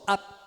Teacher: você segura o p e não solta ó ap é o oclusivo não explodido ele pode ser labial